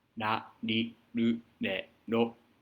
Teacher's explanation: the tip of your tongue, ら, is kind of on the plateau behind your incisors. Behind that plateau, but kind of where it comes off, ら. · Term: Japanese R